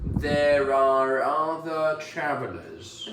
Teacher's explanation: we often actually pronounce that R sound at the end of the word are